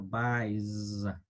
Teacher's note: Es una Z muy, muy ligera, no crean que es una Z fuerte. Y de nuevo aquí tenemos estas tres palabras o estos verbos que son irregulares, los cuales al pronunciarlos debemos de pronunciarlos con una pequeña Z.